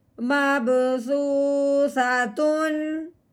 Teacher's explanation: اب حمزہ حروف ہلکی میں سے ہے، اب ہم نے تنوین پہ غنہ نہیں کرنا، بغیر غنے کے اظہار کے ساتھ ہم نے پڑھنا ہے